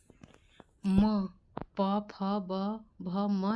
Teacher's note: प फ ब भ म का जो उच्चारण स्थान होता है वो होता है ओष्ठ